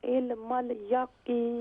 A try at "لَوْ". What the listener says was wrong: ہاں لاو نہیں ہوگا، یہ حروف اللین میں سے ہے. لام واو زبر لو، تو یہاں ہم اسے نرمی سے ادا کریں گے. لو لو لو نہیں کریں گے.